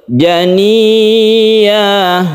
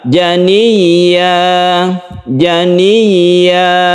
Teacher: contoh yang tidak betul Jani ya yang betul adalah janiya Jania ya nya panjangnya satu Alif itu disebut mad iwad